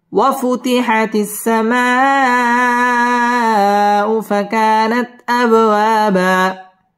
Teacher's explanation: বা দুই জবর বামে ওয়াকফ এক আলিফ টান দিয়ে ওয়াকফ করতে হবে